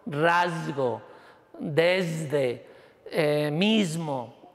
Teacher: esas S se sonorizan y me aparece el alófono Z, que sería un alófono del fonema S, pero no serían dos fonemas distintos como sería en el inglés.